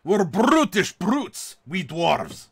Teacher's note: We're brutish brutes, we dwarves. You know, very, very throaty, very guttural, rolling R's